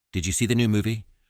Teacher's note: The stressed words are you new and movie and the intonation pattern is rising indicating a genuine question two